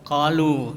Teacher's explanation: Ya, jadi pertama tajwidnya itu qalu, ya, di situ ada dua mad tabi'i, ya, qa dengan lu, ya, panjangnya dua harakat atau satu alif